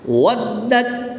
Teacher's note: پہلا حرف متحرک ہے اور دوسرا حرف مشدد ہے. واو کو دال کے ساتھ ملانا ہے اور اس میں قلقلہ بھی کرنا ہے کیونکہ جب پر حروف قلقلہ مشدد ہوں تو ان میں قلقلہ خوب جماؤں کے ساتھ کرتے ہیں.